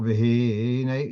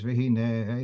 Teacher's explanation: That's milra, which means at the end, at the last syllable, that's where the stress is.